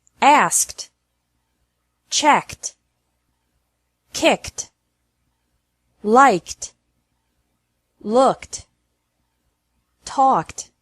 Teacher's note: e d is pronounced like t after verbs ending with a k sound